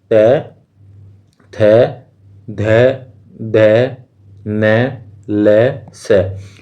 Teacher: त वर्ग में त थ ध ध न ल स, तो इनको इनके बोलते वक्त जीभ जो है वो किससे टकराती है, वो टकराती है दांत से